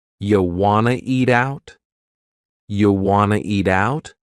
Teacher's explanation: And then we have reduced want to to become wanna. · we have reduced want to become wanna. This is a common reduction in English.